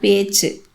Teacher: இந்த சொல்லோட இறுதியில் வரக்கூடிய உகரம் குற்றியலுகரம். சு அப்படிங்கிறது குறுகி தான் ஒலிக்குது, அரை மாத்திரை அளவுக்கு, அதனால் இது குற்றியலுகரம்.